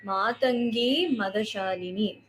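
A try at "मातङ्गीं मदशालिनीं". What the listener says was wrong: So Matangi is a little Dhirgha. Matangi Madashalini.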